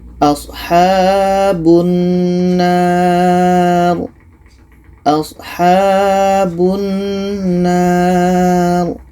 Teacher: Ada panjang alif, setelahnya ada huruf yang dimatikan, letaknya pada akhir bacaan. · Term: mad arid li sukun